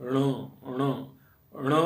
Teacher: ट वर्ग में न बोलना है लेकिन नासिका से